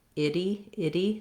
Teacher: it's sometimes challenging to do that lax I and that tense E together.